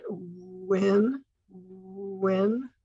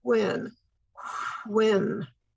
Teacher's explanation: the w sounds almost like ooh wh is just sort of a soft blowing sound